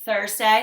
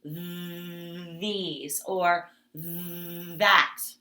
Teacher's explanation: That, just like in our lesson yesterday, remember if you put your two fingers on your throat, sometimes TH is unvoiced, like Thursday, there's no vibration. And sometimes TH is voiced